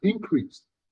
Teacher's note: When increase is used as a noun, the stress is on the first syllable